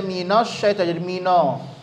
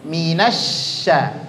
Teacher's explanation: nun dengan shin itu dua huruf yang nggak boleh ada pengaruh bibir